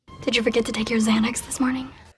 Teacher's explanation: the pitch Rises noticeably on this morning at the end this is a pattern that's used for yes no questions a rising intonation pattern